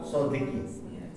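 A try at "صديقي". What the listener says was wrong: Sodiki ya panjang. Jangan lupa.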